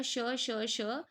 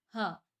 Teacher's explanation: श स श जो है महाप्राण अघोष है और ह जो है महाप्राण सघोष है